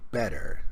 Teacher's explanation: So when people say words with the T sound, like for example, better, very often they say better. So the T becomes like a D sound. This is part of connected speech.